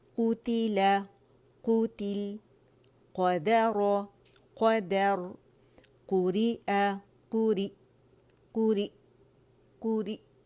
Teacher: Half a rolling نہیں کرنی, complete rolling کرنی ہے, ٹھیک ہے. قوتل قوتل, قدر قدر, قوری قوری قوری قوری, ٹھیک ہے.